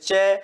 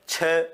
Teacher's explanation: जिसमें मुख से कम वायु बाहर निकले अल्प प्राण है ज्यादा वायु बाहर निकले महाप्राण है